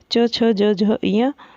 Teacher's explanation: तालव्य जो कठोर तालू से बोला जाता है